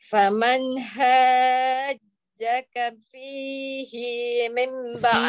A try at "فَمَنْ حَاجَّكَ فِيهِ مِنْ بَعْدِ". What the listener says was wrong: fihi mim hi pendek ma tu di di pun tak boleh panjang mim ba'di ma ja'aka minal ilm